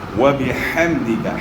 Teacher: ہا کو گلے کے درمیان سے ادا کرنا ہے، ہا کو اپنے مخرج سے ادا کرنا ہے.